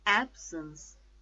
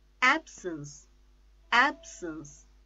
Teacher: the stress is on first syllable